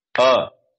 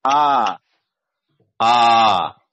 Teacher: अ बोलने के लिए एक चुटकी अ, और आ बोलने के लिए दो चुटकी आ आ